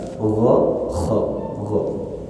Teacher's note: Kalau gha huruf lidah, maka huruf gha sama seperti huruf g, ghairi. Nah, huruf gha itu huruf tenggorokan bagian atas. Makanya bunyinya gha.